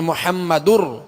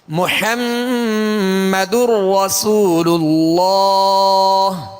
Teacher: گی، یعنی غنہ نہیں کریں گے، یہ داخل ہو چکا نون، یہ تنوین کو ہم نے را سے ملا دیا، داخل کر دیا ، محمد رسول اللہ۔ را پر زبر ہے، را پر پڑھیں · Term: ادغام